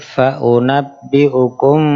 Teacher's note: Mimnya harus didengungkan dulu karena bertemu ba